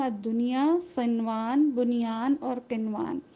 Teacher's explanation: یہ اظہار حلقی نہیں ہے بلکہ اظہار مطلق ہے۔ اظہار مطلق میں حروف تو ادغام کے ہیں لیکن ظاہر کر کے پڑھا جاتا ہے، اور چونکہ یہ اس کی وجہ یہی ہے کہ یہ ایک ہی لفظ کے اندر آئے ہیں، اور پورے قرآن پاک میں یہ چار ہی حروف ہیں جن کو ظاہر کر کے پڑھا جاتا ہے۔